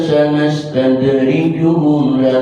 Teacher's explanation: dalnya qalqalah sughra karena matinya asli. Sanastadrijuhum bimati ketemu mim yang hidup, hukumnya idgham mutamatsilain.